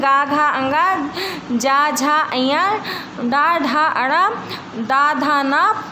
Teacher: सघोष जिन ध्वनियों के उच्चारण में स्वर तंत्रियों में कंपन होता है उन्हें हम सघोष कहते हैं। इसका उच्चारण करते समय यदि गले पर हाथ रखा जाए तो कंपन का आभास किया जा सकता है।